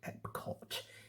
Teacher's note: lips come together for p, the back of the mouth closes for k, and then the tongue touches near the top of the mouth for t. So EPCOT. It's just throwing out, it's spitting out all of the plosive sounds all at once into this really punchy acronym.